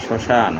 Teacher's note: শ্মশান, তালিব্যাস মফলা তালিব্যাস একাদন্ত শ্মশান। এখানে প্রথম বর্ণটির উচ্চারণ একটু নাসিক্যর দিকে যাবে, শ্মশান অর্থাৎ সানুনাসিক হয়।